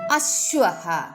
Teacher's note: എന്നും വിളിക്കുന്നു ഓരോ അക്ഷരവും അവയുടെ ഉച്ചാരണ രീതിയും നമുക്ക് നോക്കാം ആ കണ്ഠമാണ് തൊണ്ടയിൽ നിന്ന് പുറപ്പെടുന്ന ശബ്ദം വായ അധികം തുറക്കാതെ സ്വാഭാവികമായി ഉച്ചരിക്കുക ഉദാഹരണം അശ്വഹ ആ കണ്ഠ്യം ആ എന്നതിന്റെ ഇരട്ടി സമയം നീട്ടി ഉച്ചരിക്കുക ആ